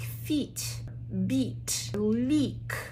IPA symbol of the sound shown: i: